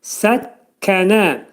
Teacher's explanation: Kəf hərfinin məxrəci demək dilin sonu və dilsəyin axırındadır